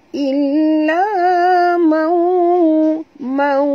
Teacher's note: Nun mati bertemu waw juga idgham al-gunnah. Kena masukkan bunyi nun ini terus ke dalam waw. Ini dikatakan idgham al-gunnah. · Ini dikatakan idgham al-gunnah. Seolah-olah nun ni tak berbunyi. Illa mau, mau dengung dua harakat.